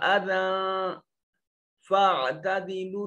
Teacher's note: اور اذن اس میں دیکھیے یا لکھنے میں آئی لیکن پڑھنے میں نہیں آئی، اور یہاں کھڑی زبر نہیں ہے، لہذا یہ تنوین ہے، اور تنوین کے بعد فا حروف اخفا میں سے موجود ہے، یہاں نون کو اپنے مخرج میں چھپا کر پڑھیں گے